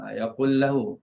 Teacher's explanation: Baik, dalam bacaan tadi ada idgham kabir pada yaqulu lahu. Jadi di idghamkan lam pertama dalam lam kedua.